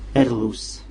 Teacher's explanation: R se prononce R, mais bien roulé.